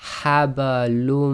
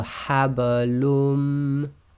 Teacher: So the haba is just nice and very soft because it's in the middle of a word.